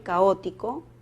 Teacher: Caótico tiene dos vocales abiertas, por lo tanto es un hiato simple.